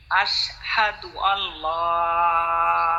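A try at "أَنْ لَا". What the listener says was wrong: এই আশহাদু আল্লাহ লাম চিকন এইটা তো আল্লাহ শব্দের লাম না। আশহাদু আল্লাহ ইলাহা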